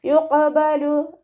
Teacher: ഖാഫ് ഇസ്തിഅലാൻ്റെ ലെറ്ററാണ്, ഉയർത്തി ഉച്ചരിക്കേണ്ട അക്ഷരങ്ങൾപ്പെട്ടതാണ്. സൗണ്ടിനെ ഹെവി ആക്കി കൊടുക്കുക